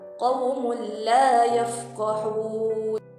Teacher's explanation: pembaca tidak perlu mendengungnya dan hanya perlu memasukkan nun sakinah ataupun tanwin ke dalam huruf lam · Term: idgham bila gunnah